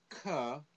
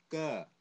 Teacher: So the K sound is not really aspirated.